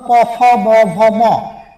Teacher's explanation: প ফ ব ভ ম এই বর্ণ উচ্চারণ করতে গেলে অবশ্যই দুই ঠোঁটের সংস্পর্শে উচ্চারণ হচ্ছে, এর বাইরে উচ্চারণ করা সম্ভব না, সুতরাং এটা হচ্ছে কি ওষ্ঠবর্ণ। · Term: অষ্টবর্ণ